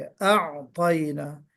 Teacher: आइन पर आवाज में जुम्बिश सी पैदा हो गई, वो नहीं होना चाहिए।